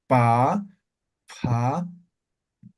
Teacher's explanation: la letra p es bilabial no ve Entonces es pa no uniendo los labios